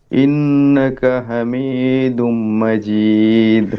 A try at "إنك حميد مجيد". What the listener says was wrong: حميد لمبا